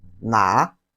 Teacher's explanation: 什么 啥 Then the second one, which in Chinese is pronounced as na. It has the third tone of Chinese language. The third tone is the falling and rising tone.